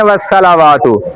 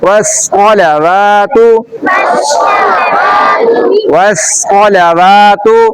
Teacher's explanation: سین کو جب موٹا کرتے ہیں تو پھر صاد بن جاتا ہے